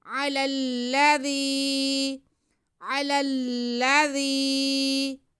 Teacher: یستفتحون من قبل، یستفتحون علی الذین، عین پہ زبر، لام پہ بھی زبر اور آگے پھر لام مشدد، پہلے لام کا زبر دوسرے لام کے ساتھ ملا کے ہم پڑھ لیں گے، اور پھر لام پہ زبر ہے، دال کے نیچے زیر ہے اور یا ساکن ہے تو یہ یا مدہ ہو گیا، دال کی آواز کو ہم کھینچیں گے۔